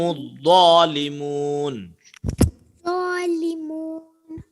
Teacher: الظا کو تھوڑا موٹا پڑھا کیجیے